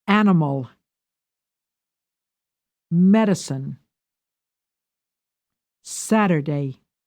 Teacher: Give primary stress to the first syllable.